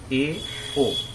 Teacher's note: अर्ध संवृत में ए, ओ, दो वर्ण है, ए, ओ, इसमें मुंह आधा बंद रहता है